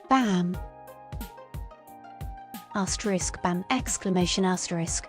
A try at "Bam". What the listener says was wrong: No, without the asterisk. Just say bam alone. Nothing else.